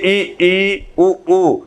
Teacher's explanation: जब आप उच्चारण करेंगे ई उ ऊ, इन 4 स्वरों का, तो आप देखेंगे तो आपका मुख द्वार लगभग बंद रहता है, इसीलिए इसको क्या कहा गया है, समृत स्वर।